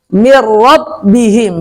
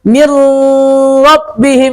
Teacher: Kenapa kok ini bila gunnah? Karena ro-nya nggak punya gunnah. Makanya nggak pakai gunnah, pendek saja.